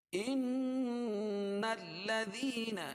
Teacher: نون کو لام میں ملائیں گے